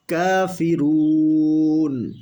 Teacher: কাফের উপরে খাড়া জবর 1 আলিফ টেনে পড়তে হবে